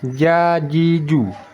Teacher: ja letaknya di tengah lidah